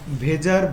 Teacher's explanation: ভেজার ভ টা হলো ঘোষ মহাপ্রাণ ধ্বনি